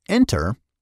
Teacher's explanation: in the word enter the stress is on the first syllable